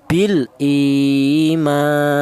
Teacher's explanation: Di sini ada ma yaitu ada alif. Di mana alif ini didahului huruf yang berharakat fathah ini dibaca mad thaobi'i. Ma panjangnya dua harakat atau dua ketukan. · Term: matobi